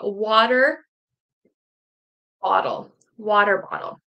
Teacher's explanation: I'm in North America so I will do the flap T that sounds like a d